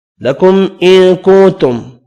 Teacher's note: دو میم ہے، دونوں پر اظہار ہوگا، دو نون ہے، دونوں پر اخفا ہوگا